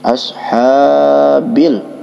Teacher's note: Kemudian pada lafaz bi asha ya, ha itu hukum tajwidnya adalah mad tabi'i ya, dikarenakan ada alif sebelumnya berharkat fathah, dibaca panjang 2 harkat ya